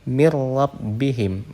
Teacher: Di situ ada nun sukun, kemudian setelahnya diikuti huruf ro, maka di situ harus diidghamkan langsung ke huruf ro tanpa didengungkan terlebih dahulu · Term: idgham bila gunnah